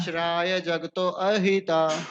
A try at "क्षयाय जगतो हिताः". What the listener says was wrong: क्षयाय जगतो हिता। देखिए यहाँ पे ना जगतों के बाद क्या है, हल्का सा एस है, उल्टा एस कह लीजिए, तो उसमें अ नहीं आएगा। क्षयायो जगतो हिताः।